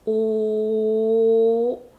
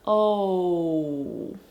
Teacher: have oh kind of like three vowels meshed into one whereas the korean o is a monophthong i can extend this all and just keep going and there won't be any changes in the sound · in the english o you have oh kind of like three vowels meshed into one whereas the korean o is a monophthong i can extend this